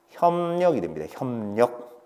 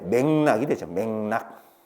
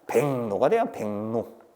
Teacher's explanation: 리을의 비음화에 의해서 리을이 니은이 됐습니다